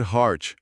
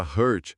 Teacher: Para dizer heart, o coração, a boca tem que abrir. É um som aberto, de A. O maxilar cai. Já a palavra hurt, machucar, exige tensão. Os lábios ficam tensos num som bem fechado no meio da boca.